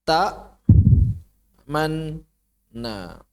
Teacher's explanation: mengubah nun dhammah menjadi sukun, kemudian dimasukkan ke dalam nun fathah. Sehingga dia suaranya hilang dan nun fathahnya bertasydid. Dalam rasam, nun pertama tidak ditulis. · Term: diidghamkan